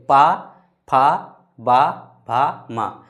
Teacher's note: यानी पा वर्ग का जितना भी उच्चारण स्थान किससे हो रहा है? ओष्ठ से।